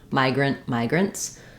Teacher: migrants will have a S sound for the plural because it ends in a voiceless T sound